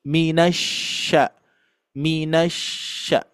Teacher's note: sini untuk pengucapan eh huruf syinnya Bapak Ibu sekalian yang mana mempunyai sifat yang tidak ada di eh huruf yang lain juga yaitu tafasyi ya tafasyi menyebar di dalam mulut